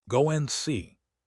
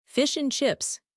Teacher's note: The word and reduces to just the sound N. Sometimes just a nasal grunt.